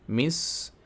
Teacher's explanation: سین کی آواز، سین کی سیٹی کی آواز صاف ادا ہونی چاہیے